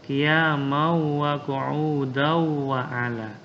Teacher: Artinya tanwinnya ini dimasukkan ke waw. Ya, idgham itu artinya dimasukkan. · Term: idgham bi gunnah